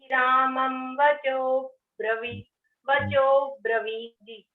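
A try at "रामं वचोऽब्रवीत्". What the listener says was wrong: हाँ, वो में बड़ी ई की मात्रा है, शुद्ध उच्चारण करेंगे, वचो ब्रवीत, वचो ब्रवीत।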